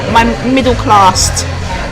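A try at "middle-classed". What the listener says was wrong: Not middle class. Middle class. You want to add the ed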